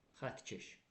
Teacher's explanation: Məsələn xətt sözünə samitdən başlayan keş şəkilçisi artırıram. Xətt keş qoşa tt-nın biri həm yazılışda düşəcək, həm də tələffüsdə